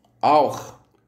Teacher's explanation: Les lettres CH de auch transcrivent un seul son noté HR, qui est un raclement au fond de la gorge.